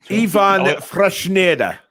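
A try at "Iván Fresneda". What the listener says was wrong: Close. Ivan Fresneda. Because the accent's on the A, it means you emphasize where the accent is. So it's Ivan, not Ivan, if that makes sense. Ivan Fresneda.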